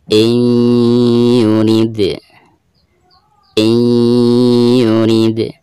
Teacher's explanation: Dan di sini ada dal sukun, sukunnya itu sukun asli ya. Maka dihukumi qalqalah sugro